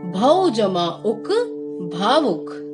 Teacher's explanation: जब औ स्वर की संधि किसी अन्य स्वर के साथ होती है तो आव का उच्चारण होता है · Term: अयादि संधि